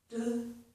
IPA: d